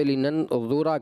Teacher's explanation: وہاں پہ لِنَن ذُورَ کر دیا، را باریک کر دیا آپ نے